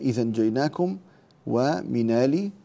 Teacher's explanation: ننتبه إلى النقل في إذا جيناكم ومن آل، وننتبه إلى مد البدل بمقدار 4 حركات